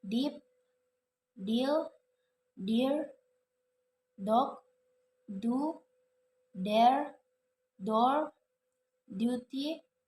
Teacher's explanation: Voiced alveolar stop sound